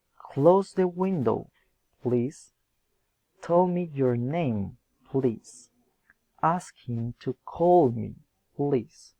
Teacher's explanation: Asking for help. Request raising intonation.